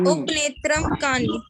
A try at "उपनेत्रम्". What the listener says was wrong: उप नहीं भैया.